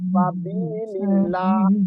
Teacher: dibikin tipis karena huruf sa itu tipis, istifal. Jadi jangan dibikin ang sabilillah itu qaf. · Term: ikhfa